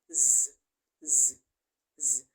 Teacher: include notice the noise in the production because that is because air flow is coming out from a very narrow passage and as such there is noisy production of sound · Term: friction